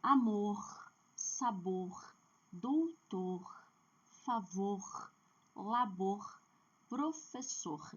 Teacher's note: quando eu tenho o R no final da palavra, a última sílaba é forte · o R faz com que a última sílaba seja forte. E você percebe que nenhuma dessas palavras tem acento gráfico. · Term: oxítona